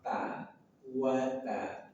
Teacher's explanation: ta, ujung lidah dari permukaan atasnya bertemu dengan gusi gigi seri atas.